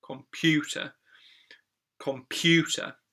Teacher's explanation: the second syllable computer is the one that stressed there